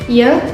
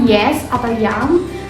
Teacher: dua bagian di dalam mulut hampir menyentuh namun tidak cukup dekat